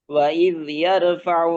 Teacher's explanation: وإذ يرفع إبراهيم القواعد وإذ يرفع ইয়া র إبراهيم মোটা, ফাতহার পরে র সুকুন র মোটা